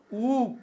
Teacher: او کی تلفظ میں زبان کا پچھلا حصہ اوپر کی جانب اٹھتا ہے، اس لیے اس مصوتے کو پچھلا بالائی مصوتہ کہتے ہیں۔